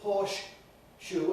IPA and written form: ˈhɔːʃ (pause) ʃuː (horse shoe)